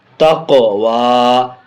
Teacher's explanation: قاف حرف قلقلہ میں ہونے کی وجہ سے اس کو آواز ٹکر کھا کر کے لوٹ بھی رہی ہے